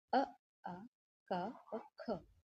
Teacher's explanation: कंठ यानी कि जिन वर्णों का सीधे कंठ से उच्चारण होता है